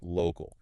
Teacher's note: Stress on the first part, local.